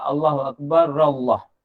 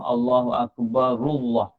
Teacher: Boleh baca ra atas boleh juga. Jadi ada orang baca ra atas, ada orang baca ra depan.